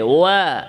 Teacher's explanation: ওয়াও ইস্তিফাল, আওয়াজ নিচে যাবে। ওয়া ঠোঁট নরম থাকবে, শক্ত না।